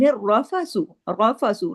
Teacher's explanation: صیام، لیلۃ الصیام الرفث، رفث را ہیوی ہوگا زبر کی وجہ سے اور ڈبل را ہے، سختی سے جڑے گا